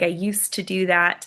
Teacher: Like if you look at the word used, like I used to do that, we know that ed sounds like t there